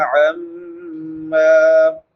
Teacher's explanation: میم مشدد ہے، شد والی میم، اس پہ غنہ ہوتا ہے